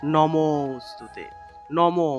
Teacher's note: অংশটা থাকবে সেই অংশটাকে একটু টান দিয়ে উচ্চারণ করতে হয় অর্থাৎ লুপ্ত অ এর উচ্চারণটা হলো মূলত আগের যে স্বরটা থাকবে সেই স এর দ্বিমাত্রিক উচ্চারণ অর্থাৎ নমোস্তুতে নমো মতেকে একটু টান দিতে হবে টান দিলেই লুপ্ত